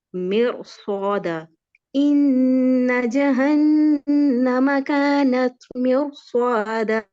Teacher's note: جب را کے بعد را ساکن کے بعد موٹا حرف آ جائے صاد آ گیا تو ہم نے را کو مفخم ادا کرنا ہے. اس کو موٹا پڑھیں گے. · صاد حرف صاد میں سیٹی کی آواز وہ آنی چاہیے خصوصاً جب صاد مشدد حالت میں ہو تو اس کی سیٹی کو ہم کم نہیں کریں گے.